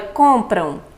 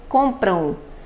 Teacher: se nós observarmos a terminação, esse M tem um som muito de U